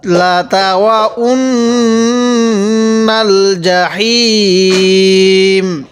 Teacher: ওয়াকফের সময় এরকম করে পড়ব, লাতাওয়াউন্নাল জাহিম। জিমটা একটু চাপ দিয়ে পড়ব এবং হায়ের মধ্যে 3 আলিফ টান দিব।